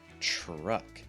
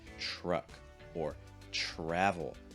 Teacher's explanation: not exactly the same sound but it's almost like a ch with an r added to it slightly at the end